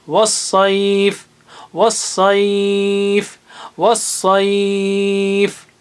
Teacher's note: 6 حرکت کے برابر کھینچتے ہوئے رک سکتے ہیں آپ